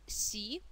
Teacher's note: аудитори при произношении посмотрите внимательно первый слог у нас си а произносится как нечто среднее между мягким с и ш